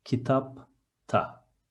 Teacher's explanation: The last consonant of the word is a voiceless one. So the suffix alternates itself from da to ta. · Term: voiceless consonant